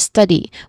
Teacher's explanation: So that's the second syllable uh and then the last uh the last word is study which has two syllables with a stress on the first syllable stud